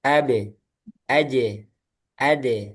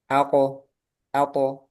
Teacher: tipis ab aj sedangkan qof sama tho dia tebal